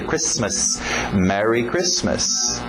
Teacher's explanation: O T é mudo, não pronuncia esse T.